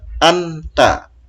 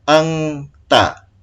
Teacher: Misalnya ini aslinya kan anta, dibaca ikhfa menjadi angta.